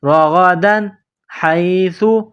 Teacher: تنوین کے بعد حروف حلقی ہے، ہا ہے تو یہاں تنوین پر غنہ نہیں کریں گے ، رغدن حیث، ہا کو یا کے ساتھ پلس کرنا ہے،